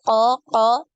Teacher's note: pangkal lidahnya yang dinaikkan ketika pengucapan hurufnya ini semua ee permukaan lidah ini ya permukaan lidahnya juga naik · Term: huruf qof